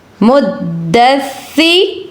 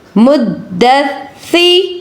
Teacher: دال پر بھی آپ نے ذرا رک کر سختی سے ادائیگی کرنی ہے اور سا پر بھی. مدثی، دال کو ایک بار آپ نے میم کے ساتھ ملایا، میم پیش دال، مد، مد دبانا ہے اس کو، مد آرام سے نہیں کہنا، مد ذرا سختی سے آپ نے اس کو کہنا ہے.